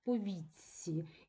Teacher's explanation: пам'ятаємо ц впливає на попереднє т і робить його подібним до себе